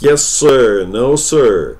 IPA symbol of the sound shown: ɜː